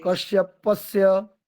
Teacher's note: ओम कश्यपस्य कश्यपस्य कश्यपस्य, एक बार तालव्य सकार है आधा और दूसरी बारी में दंत्य सकार है